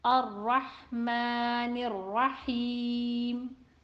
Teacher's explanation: Ra in Ar-Rahman and Ar-Rahim will be read heavy due to Fatha on it. Fatha is short vowel in the diagonal shaped line on top of letter.